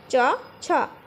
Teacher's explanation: তালুতে ঘর্ষণজনিত আংশিক বাধা পেয়ে উচ্চারিত হয় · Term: ঘৃষ্ট ব্যঞ্জন ধ্বনি